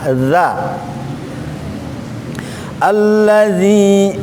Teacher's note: Yang pertama di sini yang perlu kita perhatikan adalah huruf za. Za, tempat keluarnya itu di ujung lidah menyentuh gigi seri atas, ujung juga, ujung ketemu ujung. Cuman lidah ketemu dengan ujung.